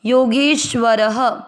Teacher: र में अ की मात्रा तो विसर्ग को पढ़ेंगे ह